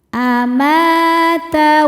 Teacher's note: Ma hukumnya mad thobi'i zohiri karena ada alif sebelumnya fathah. Cara bacanya dipanjangkan dua harakat.